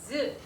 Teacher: 그래서 즈 발음을 한번 해보면 즈 발음을 할 때 혀가 센 입천장을 가볍게 막았다가 공기를 마찰시키면서 발음이 됩니다. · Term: 파찰